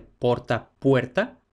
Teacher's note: tenemos que O breve va a diptongar en castellano, por eso de porta, puerta.